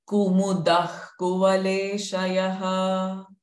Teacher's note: The second visarga is k sound.